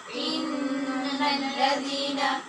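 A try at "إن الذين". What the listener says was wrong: جلدی نہیں کرنی، غنّے کی مقدار پوری کیا کیجیے.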